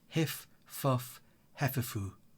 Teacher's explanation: That labiodental f sound is used consistently throughout his dialogue to suggest he has speech difficulties.